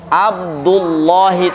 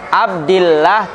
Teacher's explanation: lam pada kalimat aljalalah dibaca tafkim apabila didahului fathah